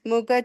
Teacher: And mukha also, that kha is mahaprana.